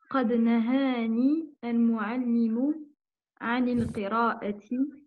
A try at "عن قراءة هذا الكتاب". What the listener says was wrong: Il n'y a pas d'alif lam. Il n'y a pas d'alif lam entre les deux, j'ai entendu anil.